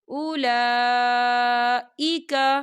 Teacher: دیکھیں اولا لام کے پر کھڑی حرکات ہے اور اس میں مد بھی ہے، تو ہم اسے 4 حرکت کی برابر کھینچ کے پڑھیں گے